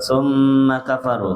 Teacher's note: Karena nun dan mim sama-sama huruf gunah ya, sehingga kita tahan tiga harakat dalam keadaan tasdidnya